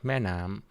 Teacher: the initial word got compressed in terms of the duration, and the latter word, right, got elongated. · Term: stress